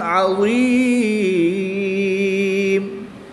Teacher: ہم نے وقف کی حالت میں دو پیش کی تنوین کو ساکن کر دیا۔